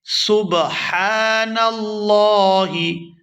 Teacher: یہاں ہا ہے، ہا کو حلق سے اچھی طرح سے ادا کریں گے